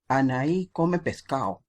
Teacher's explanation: la de no la pronuncian al final en todo caso la eliminan